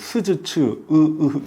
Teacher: 시옷이나 지읒, 이 이빨에서 납니다. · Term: 치음